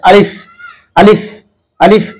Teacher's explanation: এটা মুখের খালি জায়গা থেকে উচ্চারণ করতে হবে।